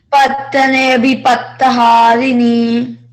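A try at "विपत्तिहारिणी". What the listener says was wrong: Patti. There is I, right? Bhipatti.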